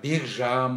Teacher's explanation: к мен ж келген кезде ж ұяң, к қатаң, бұл жерде ұяңдап бек жан болып айтылады екен